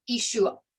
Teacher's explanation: That ayin has a glottal stop. You like swallow the ayin in the back of your throat. So it's not an ah sound.